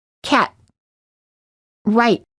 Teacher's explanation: do not release the T just let your tongue stay on top touching the gum rdge with no airor coming out when you're saying the T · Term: held T